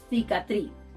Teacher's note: The best example to illustrate the difference is the word cicatriz, cicatriz, cicatriz, scar. In Spain, people pronounce the soft version of letter C as th